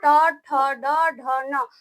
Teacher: मुर्धा पे जीभ स्पष्ट होता है तो उसको उसका उच्चारण स्थान मुर्धा होता है डी से दंत